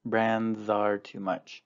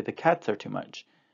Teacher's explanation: this final s actually is pronounced as a z sound